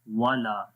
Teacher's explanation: लाम को लंबा करेंगे, लाम के बाद अलिफ है, अलिफ से पहले जबर आ गई तो यहाँ पर भी एक अलिफ के बराबर यानी 1 सेकंड लंबा करेंगे, और उसके अलावा यहाँ पर अलिफ के ऊपर मद भी है, ये छोटी मद है, छोटी मद को 2 से 3 अलिफ के बराबर लंबा करते हैं।